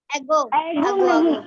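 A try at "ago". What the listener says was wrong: एगो नहीं बोलना, अगो बोलना।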